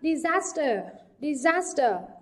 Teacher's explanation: trọng âm rơi vào âm tiết thứ hai